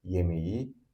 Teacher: K at the end of yemek turns into yumuşak g due to consonant mutation.